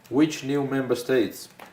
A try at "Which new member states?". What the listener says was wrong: Question. You're reading like a statement. It has to be a question. Goes up.